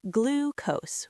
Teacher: It's pronounced glucose with a long oo sound, like in the word blue.